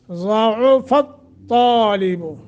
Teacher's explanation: زاد کو موٹا تا کو موٹا